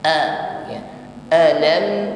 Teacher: hamzah di sini sifatnya syiddah ya, kuat tekanan hurufnya. Ucapkan dengan tegas a ya.